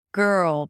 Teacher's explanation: there is no vowel between the G and the R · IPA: ɡɜːrl